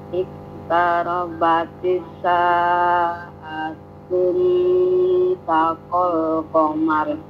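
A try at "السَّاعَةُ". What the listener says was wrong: Wan syaqqal sama tu-nya itu tu ya, bukan tun ya. Idgham syamsi, ujungnya itu tidak boleh tanwin. Iqtarabatis sa'atu wan syaqqal qamar. Wan itu as-sa'atu ya, jangan tun gitu.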